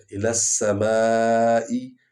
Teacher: سین کو لام کے ساتھ ملائیں گے کیونکہ سین پر شد ہے، اور جس حرف پر شد ہو اس کو 2 بار پڑھا جاتا ہے، ایک دفعہ اپنے اعراب کے ساتھ، ایک دفعہ پچھلے حرف کے اعراب کے ساتھ۔